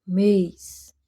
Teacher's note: O E fica meio fechado.